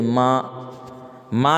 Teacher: نون کی آواز ہے نا ناک میں جا رہی ہے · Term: نون غنہ